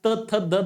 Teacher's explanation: दाताचा रोल सर्वाधिक जास्त आहे म्हणून त्याला दंत्य नाव पडलेला आहे